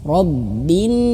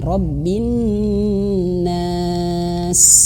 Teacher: Nah, dan ketika nun ini ada tasydid juga ya tadi. Nun bertasydid itu harus ditekan tapi ditahan. Gunnah, masuk hidung. Gunnah. Robbin.